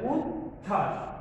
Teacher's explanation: চ এর উচ্চারণ আমরা দেখছি, ছ এর উচ্চারণ পেয়েছি, কিন্তু ব ফলার উচ্চারণ এখানে আসে নাই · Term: অনুচ্চারিত